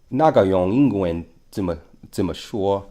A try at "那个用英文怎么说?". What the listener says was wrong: Right.